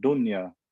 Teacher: Even though I have noon with sukun and there's a ya, I'm not going to do idgham there.